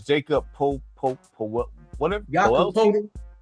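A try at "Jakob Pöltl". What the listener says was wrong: But you all right, because I understand why you said it, but it's one of them foreign names, and so like it's not pronounced like the JA is not pronounced like an English way.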